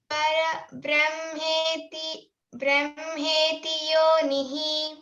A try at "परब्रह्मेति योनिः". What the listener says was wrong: రా తర్వాత బ్రా ఉంది కాబట్టి అది సంయుక్తాక్షరం కాబట్టి రబ్ బ్రహ్మ అనాలి అంతే పరబ్రహ్మ పరః కాదు ఓకే పరం కాదు పరబ్రహ్మేతి परब्रह्मेति योनिः బ్రా అంటానికి ప్రయత్నించాలి బ్రే అనద్దు పరబ్రహ్మేతి బ్రహ్మేతి ఆ